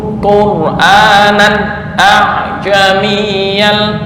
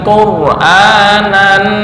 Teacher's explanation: Nan jangan dengung, tapi idhar halqi. Kenapa? Karena ada tanwin bertemu dengan hamzah. Ada tanwin bertemu dengan hamzah, dibaca idhar halqi.